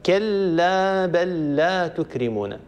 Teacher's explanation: كلا بل لا يصير نطق بلام مشددة